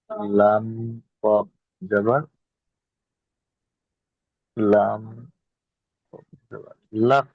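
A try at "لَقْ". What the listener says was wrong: হ্যাঁ, আপনি প্রথমে লামটাকে নিয়ে, হ্যাঁ আপনি লামটাকে নিয়ে কফের সাথে মিলাচ্ছেন, সুতরাং লামটাকে উচ্চারণ করার সময় আপনাকে লামটাকে আগে বলতে হবে। তাহলে লাম কফ জাবার।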